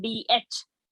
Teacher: You have to aspirate this D out with Mahaprana